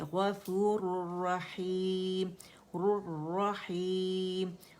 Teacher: مد عارض بنائیں گے، سیکنڈ لاسٹ لیٹر مد لیٹر ہے نا، تو مد عارض ادھر ہم بنائیں گے ٹھیک ہے، اور اس کو 4 کاؤنٹس ہم کھینچیں گے